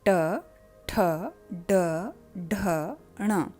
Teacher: जहाँ पे आपकी टंग टर्न करके पीछे की ओर मुड़कर जब ऊपर माउथ में टच करती है, उस जगह को मूर्धा कहा जाता है